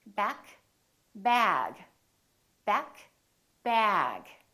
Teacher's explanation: to know whether a sound is voiced or voiceless is because the vowel that comes before the voice sound is longer